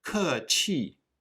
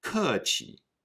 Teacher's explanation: Note that the 气 qi changes for the neutral tone. We don’t say kèqì but kèqi.